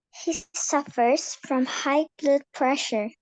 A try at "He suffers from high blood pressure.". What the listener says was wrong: GH-nya masih kedengeran G-nya. Hi, kayak lagi menyapa. Hi. One more time.